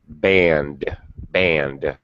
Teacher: if the last sound is voiced then it's a d sound